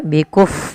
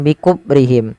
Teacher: alirkan nafasnya ketika fa karena fa salah satu sifatnya hamas